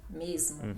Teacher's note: o S antes de consoantes sonoras fica sonoro, fica Z